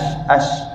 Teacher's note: pakai tengah lidah kena dekat langit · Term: huruf syim